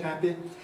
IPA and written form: ˡhæpi (happy)